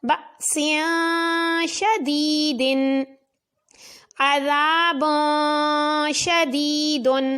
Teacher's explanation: 2 زیر کے بعد شین حروف اخفاء میں سے ہے تو غنہ کر کے پڑھا